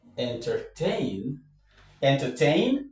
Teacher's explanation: in entertain, the stress goes on tain.